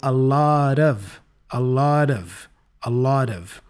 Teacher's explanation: the final t for lot sounds like a flap T sound